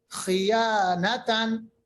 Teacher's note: خا کے نیچے اگرچہ زیر ہے اس کے باوجود یہ موٹا ہوگا. ہاں یہ صحیح ہے کہ تھوڑا سا موٹائی میں زیر کی وجہ سے فرق آتی ہے، مگر پھر بھی یہ موٹا ہی ادا ہوتا ہے.